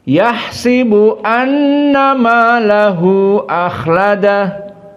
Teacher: Dan ayat yang ketiga berbeda dengan Hafs an Asim. Pertama, kasratus sin, maka sinnya dikasrohkan. Dan juga malahu akhladah, dalam keadaan jaiz munfasilnya di qasr.